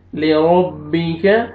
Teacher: را کو آپ نے موٹا کر کے پڑھنا ہے را کے اوپر زبر ہے